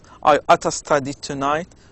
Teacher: native speakers often pronounce ought to as oughta in informal speech